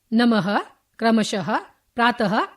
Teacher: विसर्ग self aspirate. विसर्ग का उच्चारण ह की भांति होता है।